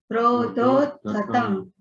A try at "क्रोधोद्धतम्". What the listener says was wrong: है ना, थोड़ा सा जोर देंगे धो के ऊपर।